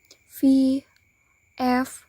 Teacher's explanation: labiodental consonants, in which the obstruction is formed by the lower lip in touch with the upper teeth